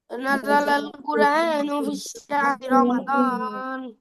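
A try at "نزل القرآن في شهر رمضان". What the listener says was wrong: এই ফিস শাহরি বলতেছো কেন? ফি শাহরি, ফি শাহরি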